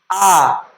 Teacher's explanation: बड़ा आ को बोलने में पूरा मुंह खुलने लगा। तो ये विवृत्ति स्वर हो जाएगा।